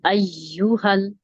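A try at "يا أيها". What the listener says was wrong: आपकी य वाली साउंड आ रही है अयु हल अयु हल ये वाइब्रेशन वाली साउंड नहीं होनी चाहिए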